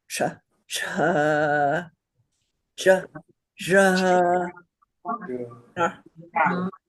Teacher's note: Second varga is palatal. The tongue goes on that little bump at the back of the roof of your mouth.